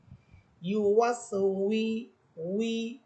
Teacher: আর ওয়াও হরফ সম্পূর্ণ ঠোঁট থেকে উচ্চারণ হবে